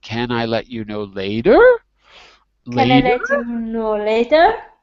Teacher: so you got to go up on the word later and it has two syllables later my voice rises on later it rises on the second